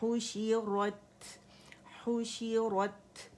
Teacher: یہاں پہ ہم نے تا میں ہمس ظاہر کرنا